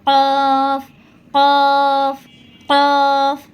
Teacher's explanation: এই কফটা জিহ্বার গোড়া তার উপরে তালুর সঙ্গে লাগিয়ে এই কফটা উচ্চারণ হবে